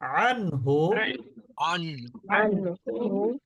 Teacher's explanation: এখানে নুন সাকিন কিন্তু স্পষ্ট উচ্চারণ হচ্ছে কোন গুন্না হচ্ছে না